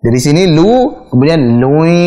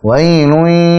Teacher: kalau mengucapkan lui, masuk hidungnya adalah saat idgham. Saat melebur baru masuk hidung.